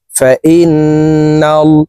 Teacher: হরকতের বামে নুনে মিমে তাসদীদ হইলে সর্ব অবস্থায় নাকের বাসি থেকে গুন্নাহ করিয়া পড়িতে হয়। 3 সেকেন্ড পরিমাণ গুন্নাহ করে ধরে রাখবো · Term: ওয়াজিব গুন্নাহ